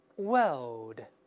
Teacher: 我们先读一下英式发音，这个世界 World World L L 它是没有卷舌音